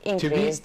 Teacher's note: Increased here is an adjective, so the stress is on the first syllable.